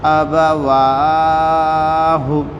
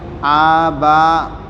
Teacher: یہاں پر الف کے اوپر زبر ہے، با کے اوپر زبر ہے، واو کے اوپر کھڑا زبر ہے اور ہا کے اوپر پیش ہے، یعنی شروع کے 2 حروف کو نہیں کھینچنا ہے، بیچ کے واو کو کھینچنا ہے، آخر کے ہا کو نہیں کھینچنا ہے، کیونکہ ہم نے شروع میں پڑھ لیا زبر زیر پیش کو جلدی پڑھے، تھوڑا بھی نہ کھینچے۔